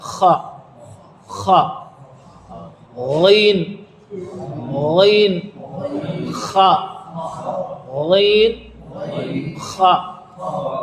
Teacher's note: یہ حلق کے اوپر والے حصے سے نکلتے ہیں.